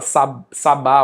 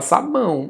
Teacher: Então, na letra é um o, mas o som é um u.